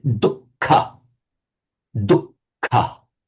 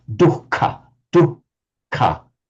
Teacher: Double K and aspirated. In Sanskrit, that H is separately pronounced as dukkha, dukkha, with an H sound